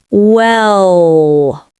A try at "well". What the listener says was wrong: Maybe not that long, but yes.